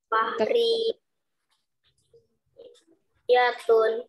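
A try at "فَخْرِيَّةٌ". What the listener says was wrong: Fakhriyatun. Di situ ada ya bertasydid.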